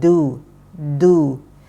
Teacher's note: Kelihatan sekali bahwa dia keluar dari ujung lidah